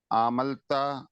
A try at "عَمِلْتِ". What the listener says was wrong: عملت، عاملت، عاملت وہ زیر ہے۔